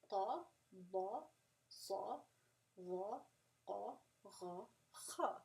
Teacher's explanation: As you're saying it, you can hear that level of tafkheem getting lower.